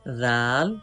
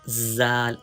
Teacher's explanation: Read zal without whistle sound. Do not read with whistle sound.